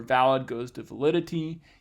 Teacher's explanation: there's a stress shift from the first to the second syllable